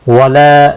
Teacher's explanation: ला अलिफ मद्दा है, एक अलिफ के बराबर खींच कर पढ़ेंगे